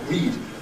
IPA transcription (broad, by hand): rid